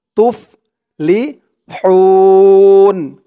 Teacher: হার উচ্চারণটা গলার ভিতর থেকে চিকুন হয়ে আসবে। হুন, হু বলে তিন আলিফ টান দিয়ে এই নুনকে ধরবে, নুনের উপরে জবরটা সাকিন হয়ে যাবে।